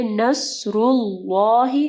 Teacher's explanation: اللہ کا نام ہم لوگ نے ہیوی پڑھا کیونکہ اس کے اوپر پیش تھی